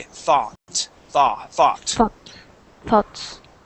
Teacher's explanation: would say thought okay and have more of o sound but in the United States that o u g sounds like an a